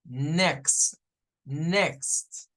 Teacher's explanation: de sonido o sea la x no tiene un sonido propio para sacar la x en el inglés necesitamos unir un sonido de una k y de una s